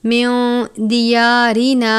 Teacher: نون ساکن کے بعد دال ہے، دال حروف اخفا میں سے ہے، اخفا کا قاعدہ لگتا ہے